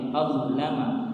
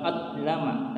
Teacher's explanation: Padahal huruf dha bukanlah merupakan huruf qalqalah ya. Jadi kita harus hati-hati jangan sampai mengqalqalahkan atau memantulkan huruf dha-nya. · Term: dha yang sukun